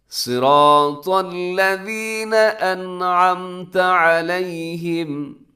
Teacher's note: next آیت، صراط الذین انعمت علیہم، صراط الذین، صاد موٹا ہے، را موٹا ہے، طا موٹا ہے، صراط الذین، الذین میں اس کا خیال کرنے سے اکثر لوگ الذین کر دیتے، تو الذین نرمی کے ساتھ پڑھنا ہے آپ نے، سیٹی نہ ہو